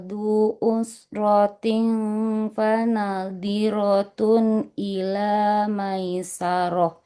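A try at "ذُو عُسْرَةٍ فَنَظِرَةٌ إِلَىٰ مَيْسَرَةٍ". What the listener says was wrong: Huruf zal dengan zo-nya nggak boleh jadi du, nggak boleh jadi di. Huruf zo dengan zal makrotnya di mana, Bu? Ujung lidah menempel ke ujung gigi seri. Iya, nggak boleh du ya, tapi zu.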